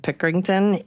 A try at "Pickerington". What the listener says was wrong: Probably. The ing is just silent. Just Pickerton.